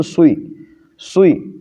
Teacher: جلدی سے دیکھیے، سو وی کو جلدی سے ادا کریں گے تو سوئی، سوئی، زیر ابھی ادا ہی نہیں ہوا اور یہ سین کی بگڑی ہوئی آواز ہے، اور ایک ایکسٹرا حرف آ رہا ہے واو، چونکہ ہونٹ جو ہے یہ واو کا مخرج ہے۔